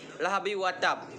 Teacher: ke-18 lahabiw watab dinamakan bacaan ikhfa idgham bigunnah sebab khas roh tanwin bertemu dengan huruf Waw secara membacanya dengan mendengung